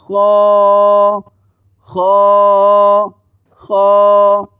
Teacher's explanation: اس لفظ کو پر پڑھا جائے گا، یعنی موٹا پڑھا جائے گا